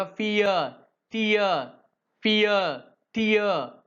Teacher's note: the vowel glide begins at e and moves towards a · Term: சென்ட்ரலைஸ்டு diphthong